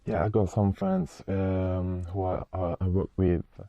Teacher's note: Very clear, but again rather monotonous intonation.